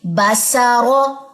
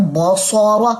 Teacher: बा को आपने बारीक रखना है, इस्तिफाल की सिफ्त रखनी है